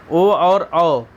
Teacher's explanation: ओ दैतो कंठोष्ठव, माने कि इसका सूत्र है ओ दैतो कंठोष्ठव, माने ओ और औ इनका उच्चारण कंठ और होंठ दोनों से होता है